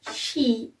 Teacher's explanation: An example of it is sheep, and it's a voiced sound because when we say E, our throat is vibrate, and its place of articulation is front, and its manner of articulation is close. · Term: long E